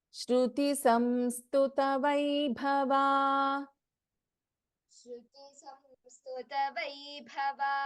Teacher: ಇನ್ ವೈಭವ ಭಸ್ ಎ ಮಹಾಪ್ರಾಣಾಕ್ಷರ